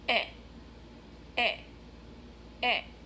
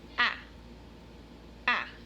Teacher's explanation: my lips are short not super tight not round versus the second sound which is ah ah my mouth is open right not lip my lips are not round like right but